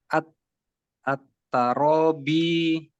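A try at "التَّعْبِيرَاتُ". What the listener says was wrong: Ini ainnya sukun Pak. At-Ta'bi. Rotu. Panjang roknya.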